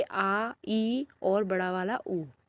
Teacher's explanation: दीर्घ स्वर वह होता है जिनको बोलने में ह्रस्व स्वर से थोड़ा ज़्यादा समय लग जाता है